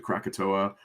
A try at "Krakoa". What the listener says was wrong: Krakoa. You added like 4 other letters.